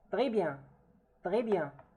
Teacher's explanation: the S here is not pronounced simply because it's not followed by a vowel. The B here is not a vowel, so we don't pronounce it.